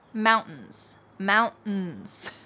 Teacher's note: Well, often if there is a T plus in sound at the end of a word, we drop the T and kind of swallow that sound.